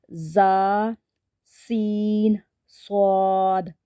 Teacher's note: सफीर है इनको हरूफ सीरिया इस वजह से कहते हैं क्योंकि जब हम इन तीनों को अदा करते हैं तो सीटी वाली आवाज आती है जुबान की नोक और दोनों दांतों के अंदर किनारे से अदा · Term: हरूफ सफीर